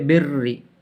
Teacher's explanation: زیر والی رائے مشددہ کو باریک پڑھیں گے